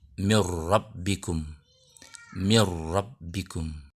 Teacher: Untuk contoh idgham bila gunnah yang bertemu dengan huruf ra, seperti di kata mir rabbikum, mir rabbikum. Bunyi n di kata min lebur ke ra di depannya dengan tanda tasydidnya